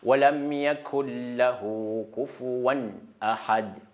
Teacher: Mais idgham, bila ghunna, ici, bila ghunna, cela veut dire au moment de lecture, les nouns, c'est pas zahir. On ne prononce pas les nouns. Ça ne sort pas les nouns dans le nez.